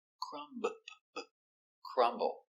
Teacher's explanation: We pronounce the B.